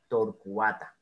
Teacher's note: mu arcus bien en tor cuata eso no es un diptongo Entonces el cua no suena como una sola sílaba sino como dos Porque son dos sílabas torcuata y el acento está en la